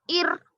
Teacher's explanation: रॉय साकिना से पहले जेर है, एक्चुअली ये रॉ को बारीक पढ़ेंगे